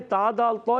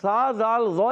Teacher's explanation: تا دال تو یہ سختی سے ادا ہوتے ہیں، اور سا زال ذو یہ نرمی سے ادا ہوتے ہیں